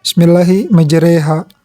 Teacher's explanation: alif al-mumalah. Jadi dia antara fathah dan kasroh gitu